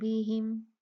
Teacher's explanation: میم ساکن ہے، اس کے بعد با ہے، تو یہاں پر میم ساکن کا غنہ بھی اخفا ہوگا